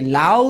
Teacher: আ হচ্ছে একটা পূর্ণ স্বরধ্বনি। কেন? কারণ এটাকে টানা যাচ্ছে।